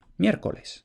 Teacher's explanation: la disimilación de la segunda R en L. Sabemos que la disimilación de consonantes líquidas es muy frecuente y uno de los factores que suelen propiciarla es precisamente que haya 2 o más consonantes líquidas en la misma palabra muy cerca.